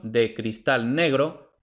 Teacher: La D de la preposición de cristal negro no aparece detrás de pausa, no aparece detrás de N, no aparece detrás de L, por tanto, aproximante